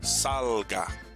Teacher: second to the last in this case the first syllable gets the stress